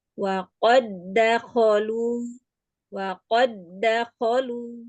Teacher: langsung memasukkan dal yang pertama ke dalam huruf dal yang kedua. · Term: idgham mutamasil, idgham mutamatsil